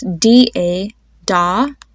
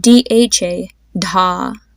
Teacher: when you pronounce the letter H with a consonant, you want there to be a stronger puff of air on your hand.